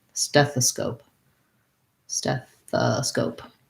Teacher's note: And then I have scope. This O actually says an O sound, which is a diphthong in American English. So make sure you hold your O nice and long and end with a P.